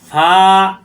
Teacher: প্রকাশ পাবে না এরকম মোটা হবে গুগু সর পরিমাণ টান হবে উপরের দাতের আগের নিচে ঠোটের পেটে লাগবে